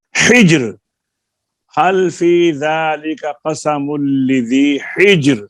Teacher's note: تو اگر تیسرے حرف کے نیچے کسرہ ہے، زیر ہے، تو را پھر باریک ہوگی، جیسے یہ ہاں حجر، حل فی ذالک قسم لذی حجر، را ساکن ہوگی وقف کی وجہ سے، جیم پہلے ہی ساکن ہے، ہا کے نیچے زیر ہے، اس کی وجہ سے را جو ہے وہ باریک ہو گئی۔ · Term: را باریک